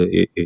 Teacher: अग्र स्वर मतलब जीभ का आगे वाले हिस्से को टच होता है ना, वो ई जैसे जीभ का आगे वाला हिस्सा टच ए ए, ठीक है?